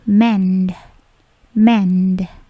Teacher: bunyi di D-nya itu memantul sedikit jika dia berdiri sendiri